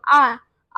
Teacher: तो आपकी जो आवाज है वो पीछे की तरफ से आ रही है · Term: पश्च स्वर